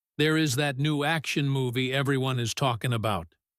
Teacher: when they reach the end of their thought, their voice drops. It gets lower and maybe a little softer. That is a dropping intonation, and it is the biggest green light you can get. · Did you hear how his voice went down at the end of talking about?